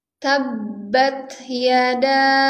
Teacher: jadi tekan dulu baru di e pantulkan tabbat Yada [Musik] abiahabab jadi harus ditekan dulu selesaikan tasdidnya baru dipantulkan